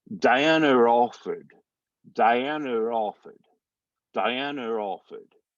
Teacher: So it's almost, the R could also be considered to be tacked at the beginning of offered, but it's easy to think of it as like right in between there.